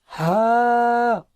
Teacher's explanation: গলায় কোথাও বাঁধবে না একেবারে ফ্রিলি